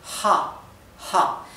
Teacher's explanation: Ja la letra h en alemán se lee ja ja y se pronuncia como la H inglesa es parecido a una J del español solamente que más suave